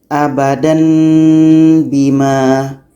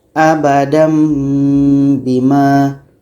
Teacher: Menukarkan bunyi tanwin ini kepada bunyi mim. Dan kita baca dengung.